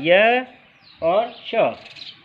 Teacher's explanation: इसके अलावा य और श, इनको हम तालु से बोलते हैं